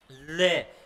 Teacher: प्रयत्न करेगी कि जीभ के दोनों साइड से क्या हो जाएगी श्वास वायु निकल जाएगी बगल से निकल जाएगी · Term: पार्श्विक